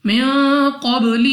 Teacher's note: میم ساکن کے بعد قاف حروف اخفا میں سے ہے غنہ کر کے پڑھیں گے اور غنہ کرنے کے بعد قاف کو موٹا پڑھنا ہے کیونکہ قاف حروف مستعلیہ میں سے ہے. اس کے بعد با ہمارے پاس قلقلہ میں سے ہے تو جب ہم ادا کریں گے ہمارے مخرج میں جنبش سی ہوگی یعنی ہمیں اپنی آواز واپس لوٹتی ہوئی سنائی دے گی.